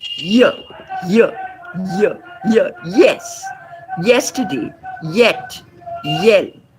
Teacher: We are not talking about the blade of the tongue at all here. It's just the front of the tongue against the hard palate. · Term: palatal sound